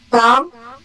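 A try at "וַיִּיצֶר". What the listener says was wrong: Non, c'est un R. Il faut le prononcer comme un R. C'est un ret. Vailli. Alors voilà, parce que voilà, et le point qui est là signifie que c'est un P.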